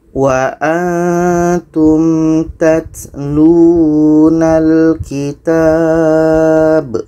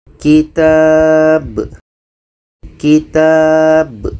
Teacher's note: B-nya itu pantulan. Itulah qalqalah.